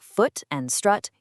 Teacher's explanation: In the south of England, words like foot and strut use two completely distinct vowel sounds. But in the north, those vowels merge right together, meaning put and put actually sound exactly identical. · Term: footstrut split